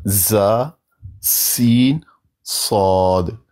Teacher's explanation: ان تینوں حروف کو ادا کرتے وقت زبان کی نوک نیچے والے دانتوں کے کناروں سے لگتی ہے۔ زبان کی جو نوک ہے، زبان کا جو سرا ہے، نیچے والے دانتوں کے کناروں سے لگتی ہے۔ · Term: زا، سین اور صاد کا مخرج